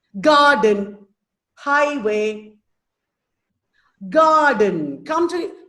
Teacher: has two syllables again stressed followed by unstressed